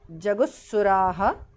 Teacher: Jaguhu visarga changes to su there